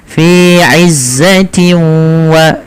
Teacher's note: Nah, cara membacanya adalah masukkan nunnya atau suara bunyi nunnya ke huruf waw sehingga hilang suara nunnya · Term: idgham bi gunnah